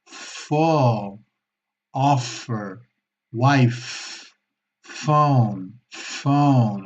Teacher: Las fricativas que son sonidos que emiten algo de aire, Y tenemos las labiodentales donde los dientes superiores se apoyan sobre los labios inferiores, como la F española, pero con más fuerza